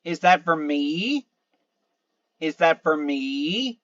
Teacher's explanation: Is that for me? So me is the rising tone.